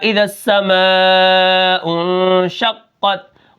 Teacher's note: قاف کو ہم موٹا کریں گے